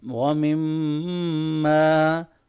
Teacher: میم مشدد پہ ہم غنہ کریں گے اور الف مدہ کو لمبا کرنا ہے